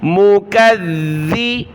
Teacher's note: زبان نکالیں گے ذال پر